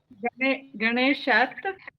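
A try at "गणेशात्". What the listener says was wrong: గణేశాత్ దీర్ఘం పెట్టండి. గణేశాత్.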